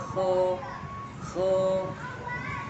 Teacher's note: Infitah dia masih terbuka antara lidah dengan langit-langit, mulutnya masih terbuka.